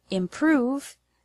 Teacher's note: The word improve has the stress on the second syllable